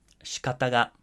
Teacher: I chose this one because the first syllable here is not voiced. Okay, you don't actually hear the vowel sound here. So you're not going to actually hear it go up in pitch because there's obviously no pitch at the beginning here.